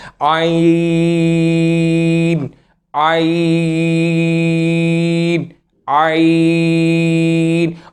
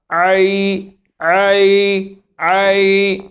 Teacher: ये हमेशा आ की जो साउंड है वो ये आपके गले से अदा होगी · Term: आइन की साउंड